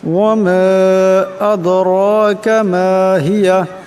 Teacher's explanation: করিয়া পড়তে হবে ওয়ামা আদরাকা মা হিয়া আদরাকা এখানে দাল সাকিন দাল হলো কলকলার হরফ তাই ওর সাথে টক্কর খাবে